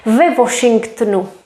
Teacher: we don't really read w we pronounce it as v